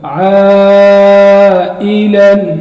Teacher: قاعدے میں نے آپ کو بتایا جب حروف مدہ ہو اور اس کے بعد حمزہ آ جائے تو وہاں پر 4 الف کی مقدار مد ہوگی، تو یہاں پر وہ قاعدہ یاد کر لو۔ عائلا، الف مدہ ہے، اس کے بعد حمزہ ہے، تو یہاں پر 4 الف کی مقدار مد ہوگی